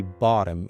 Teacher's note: And the word bottom, when we have T here and it's surrounded by two vowel sounds, just like double O here, Very simply, you change T into D and say bottom in American English.